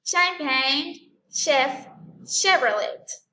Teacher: Entonces el origen es French y por lo tanto tiene ese sonido de sh, sh, sh. Then we have CH, but the sound is going to be examples like chemist, court, and chorus.